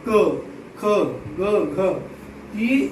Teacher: क वर्ग के अंतर्गत जो पूरे 5 वर्ण हैं, इसका उच्चारण स्थान होगा कंठ।